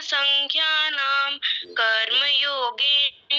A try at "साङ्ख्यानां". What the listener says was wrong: संख्या नाम नहीं है, सांख्या नाम बोलो।